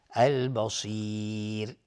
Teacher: را هم اینجا ترقیق هست چون قبلش یا اومده · السمیع الف لام شمسی، البصیر الف لام قمری و صاد از حروف استعلاء غلیظ تلفظ میشه